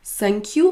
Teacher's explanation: Si vous faites un son S, sinq, votre langue ne sort pas du tout de votre bouche.